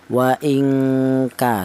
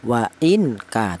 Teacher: Ini cara bacanya non mati ini disamarkan ya. Wa ingka, seperti itu. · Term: ikhfa